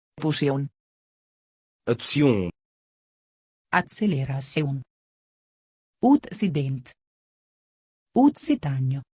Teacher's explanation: c'est plutôt prononcé tse que xe